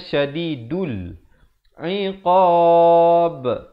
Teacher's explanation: Dan diberikan pantulan kerana ba merupakan huruf qalqalah.